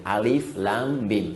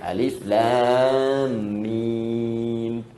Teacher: Alif harful hawa, lam ke lisan, mim di bibir. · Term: makhraj